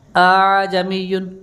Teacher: تسہیل کا مطلب دوسرا حمزہ جو ہے اس کو نرم کر کے پڑھیں گے آپ